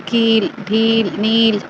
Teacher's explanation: बड़ी ई की मात्रा जिसको हम ज्यादा खींचते हैं